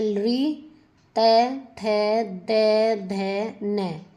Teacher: आगे है दंतया वर्णा जो दांतों से बोले जाते हैं। यहां पर है हमारे दांत तो वो है ल त थै द ध न ल ल और से ये दांतों से बोले जाते हैं।